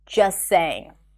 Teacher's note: you can drop the T and connect the two sounds together